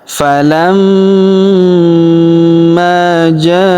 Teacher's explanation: huruf ma kita tahan dan kita tekan serta kita dengungkan dua sampai harakat karena terdapat tanda tasdid di atasnya. Lalu kita panjangkan dua harakat karena alif di depannya ya.